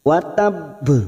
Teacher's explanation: Ini yang disebut dengan qalqalah kubra. Karena wakof mati asli di akhir kalimat dan disertai tanda tasdid, maka bunyinya watab. Ya, masuk dulu baru dipantulkan.